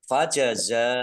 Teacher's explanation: Fajazauhu za fathah alif mat tabi'i tetapi karena bertemu dengan huruf hamzah di satu kata maka menjadi mat wajib muttasil. Dibaca panjang harus 5 harokat. Dhamir ha domah terbalik bacaan mat silah qasiroh 2 harokat sama dengan mat tabi'i.